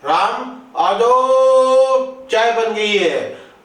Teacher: आ जाओ चाय बन गई, तो अब यहां ओ है ना, उसको हमने क्या लंबा खींच दिया है, तो इसका मतलब ये हमारा क्या हो जाएगा, प्लुत हो जाएगा।